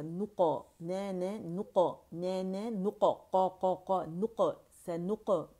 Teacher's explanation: और क़ाफ का कलकला मोटा होगा